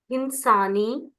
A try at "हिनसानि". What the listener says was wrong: हिनसानी, हिनसानी, हिंसानी नहीं है, हिनसानी, हिनसाव, हिनसाम, ये सब आप पित प्रत्यय है। आडुत्तमस्य पिच से लोट लकार के उत्तम पुरुष, ये सब पित प्रत्यय है।